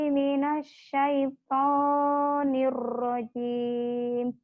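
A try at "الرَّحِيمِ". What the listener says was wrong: Jangan niu rahim ya, nir, R-nya. Hir. Nir, jangan niu rahim ya, jangan ke W, ke R. Kamu agak cadel ya, enggak?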